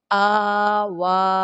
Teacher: اس کو ایک الف کے برابر یا یوں کہہ لیں ایک انگلی کے برابر لمبا کریں گے ، اور وا کے اوپر مد بھی ہے اور کھڑی بھی